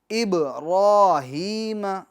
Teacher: बा में कलकला करेंगे, आवाज़ को लौटाएंगे। इब्राहीम, अगर आप यूँ पढ़ते हैं इब्राहीम, बा के अंदर जुम्बिश नहीं देते हैं, आवाज़ को नहीं लौटाते हैं तो यह गलत होगा।